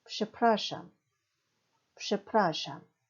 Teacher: 죄송합니다라는 대표적인 표현 przepraszam, przepraszam 쓸 때는 프, 즈로 쓰지만 발음은 psh입니다. 그래서 przepraszam 뒤에서 두 번째 모음인 프라의 강세가 있습니다.